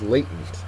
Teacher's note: first syllable is accented